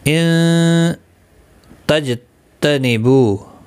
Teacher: ان تجتنبو، جیم ساکن پر قلقلہ ہوگا، نون ساکن کے بعد حروف اخفا کا تا آیا، اخفا حقیقی ہوگا، اور بو واو مدہ ہے، ایک الف کی مقدار کے برابر کھینچ کر پڑھیں گے.